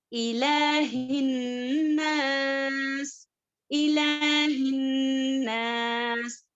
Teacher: اب الہن 2 حرکات کے برابر 2 مقدار کے برابر غنہ کریں گے